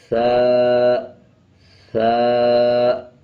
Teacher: ثا اور ذال کو پڑھتے ہوئے جب ثا پڑھیں گے، زبان کی نوک دونوں دانتوں کے درمیان رکھیں گے، تب ثا ادا ہوگا